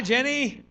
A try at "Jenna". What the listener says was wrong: It's got an A. Jenna. It's right there.